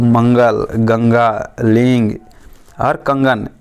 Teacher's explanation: से भी हवा निकलता है और मुझसे भी हवा निकलता है जब भी इसका उच्चारण करेंगे तो नाक से भी हवा निकलेगा मुंह से भी हवा निकलेगा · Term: अनुनासिक वर्ण